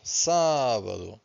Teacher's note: so we stress the first syllable, sábado